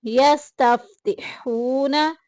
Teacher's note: मिन क़ब्लु, मिन यहाँ पे इख्फा हो रहा है, मिन क़ब्लु यस्तफ्तिहूना, हूना में देखे वाव साकिन पीछे पेश, वाव मद्दा का कायदा जारी हो रहा है, एक अलिफ के बराबर लंबा करेंगे।